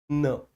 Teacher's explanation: ना को उच्चारित करने में क्या होगा कि जिह्वा हल्का सा मसूड़ों को छूने का स्पर्श करेगी। न, बोलो जरा ना, तो जिह्वा को महसूस कराओ कि वो मसूड़ों को छू रही है। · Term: वतस्य